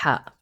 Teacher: Now uh it's very similar to the uh h but if I can if I can describe it it's going to be a strong whispered h